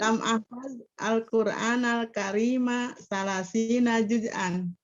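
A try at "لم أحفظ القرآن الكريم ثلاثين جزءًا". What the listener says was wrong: Sahih, mumtazah ya. Udah betul itu ya.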